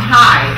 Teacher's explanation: if it's H-I, the vowel is long, high, and that's an open syllable